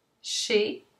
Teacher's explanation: you have that closer E sound